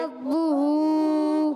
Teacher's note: ربہ میں را پر زبر آنے کی جگہ را ہو جائے گا پر، کیا ہو جائے گا؟ را، اور را کو با سے ملانا ہے، با پر تشدید بھی ہے، پیش بھی ہے، پیش آنے کی وجہ سے اس کو کھینچنا نہیں، حرکت ہے۔ ہاں، ہا پر الٹا پیش ہے، الٹا پیش آئے گا تو ہم ایک الف کھینچیں گے، جیسے ربہ، کیا پڑھیں گے؟